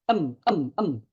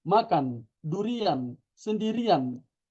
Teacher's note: Bunyi N-nya jelas. Lidah menempel ke langit-langit, tempelkan lidah kita, N. Terasa, lidahnya nempel, N. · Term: nun yang berharakat sukun